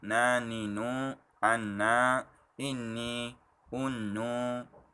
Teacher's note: Huruf nun keluar daripada hujung lidah, yang mana ditekankan hujung lidah itu pada permulaan lengkungan lelangit, iaitu sedikit tinggi daripada gusi atas, ya, bukan di gusi atas tapi sedikit tinggi.